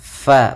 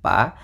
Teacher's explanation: kita menyamarkan suara tanwinnya kepada huruf fa fa makhrajnya adalah e gigi kita yang atas menempel dengan bibir bawah sehingga membentuk suara apa ada sedikit rongga untuk mengeluarkan nafas kita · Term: makhraj huruf fa